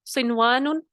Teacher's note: صنوان میں دیکھیے نون ساکن ہے اس کے بعد پھر واو آ گیا تو ہم نے کیا کیا, قاعدہ اپلائی, ادغام کا بننا چاہیے تھا لیکن یہاں پر نہیں ہوا, اظہار کا قاعدہ ہوا